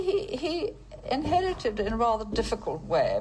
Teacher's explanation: there's a lot of something which we call vocal fry which is when you kind of relax you don't really vocalize properly and the way the vowels are made is quite distinctive there